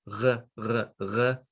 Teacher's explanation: usually I use the Israeli pronunciation, which is more of a guttural Resh. R, r, r. It's back here.